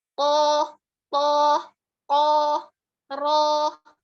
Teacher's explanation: ro itu tebal, to itu tebal, kof itu tebal dengan cara kita menaikkan pangkal lidah kita yang belakang itu ke atas. Ya, jadi bukan bibir yang dipakai tapi pangkal lidahnya.